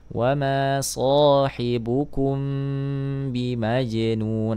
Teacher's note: mim sukun bertemu dengan huruf ba maka di sini menjadi Ikhfa Syafawi